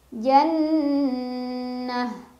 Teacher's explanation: Jan ada gunnah musyaddadah karena ada nun yang bertasydid. Cara bacanya didengungkan, ditahan kurang lebih 2 harokat. Jannah. Tak marbutoh apabila berhenti, berubah jadi ha sukun.